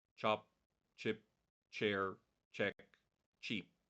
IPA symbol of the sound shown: tʃ